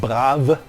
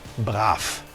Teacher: So clearly an effect of final devoicing in German.